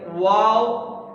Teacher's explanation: واو ہونٹوں کو باہر نکال کر پڑھیں گے